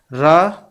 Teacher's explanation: जीवा की नोक वर्ष पर बार बार ठोकर मारती है तो उसको कहा जाता है लुंठित वर्ण।